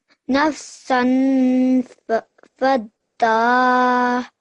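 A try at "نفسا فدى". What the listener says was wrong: Well done, okay?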